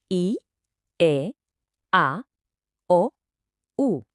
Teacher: Se nota, se nota como la lengua viaja de adelante hacia atrás y de arriba a abajo. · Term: vocales